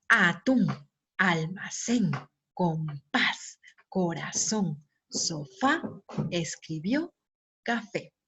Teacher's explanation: las palabras que tienen acento en la última sílaba se denominan agudas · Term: palabras agudas